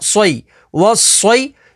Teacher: صاد کے اوپر تشدید ہے تو تشدید والے حرف کو 2 دفعہ پڑھیں گے، اور صاد حروف مستعلیہ میں سے ہے تو اسے پوری یعنی موٹا پڑھیں گے